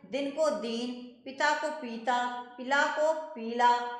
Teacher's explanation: कुछ स्थानों पर ह्रस्व स्वर को दीर्घ स्वर की भांति बोला जाता है।